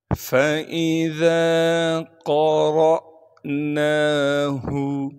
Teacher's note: گے اور را کو آگے حمزہ ساکن سے ملا دیں گے، حمزہ ساکن ہونے کی وجہ سے ہلکا سا جھٹکا دے کر پڑھیں گے